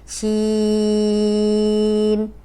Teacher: اینڈ میں چھوٹی سی نون کی آواز آئے گی